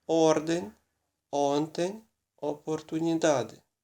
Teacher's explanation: читається як о на початку слова і коли наголошено